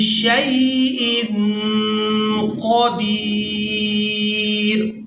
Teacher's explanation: وقف کی صورت میں ہم نے را کو ساکن کر دیا